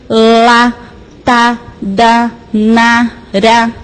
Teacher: São sons que eu preciso de ponta de língua